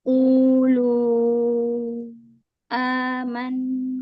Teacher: mat badal yang di hamzah jangan terlalu panjang, hanya 2 harokat saja